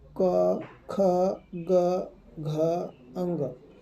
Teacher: इसका जो उच्चारण स्थान आता है दोस्तों, वो किस में आता है, कंठ में आता है